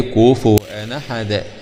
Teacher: فتحنا النون الأخيرة التي تنطق ولا تكتب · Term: نقل حركة الهمزة